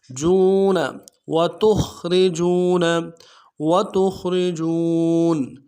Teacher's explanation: تا کو خا کے ساتھ ملانا ہے، خا کو موٹا ادا کریں گے، را کو باریک ادا کریں گے